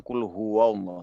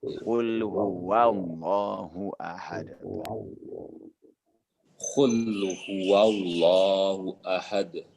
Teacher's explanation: Wawnya ditipiskan ya. Jangan qul huwallahu tapi qul huwa ya.